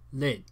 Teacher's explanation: they nativified this to lid, bringing this back vowel to the front of the mouth